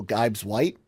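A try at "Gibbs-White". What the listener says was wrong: It's not Gibes, it's Gibbs. double B. It's never an I.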